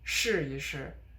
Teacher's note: the first one it is stressed so it starts up high